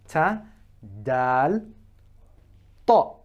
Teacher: the tip of the tongue is rising up behind the front two incisors and it's at the point where the gums are starting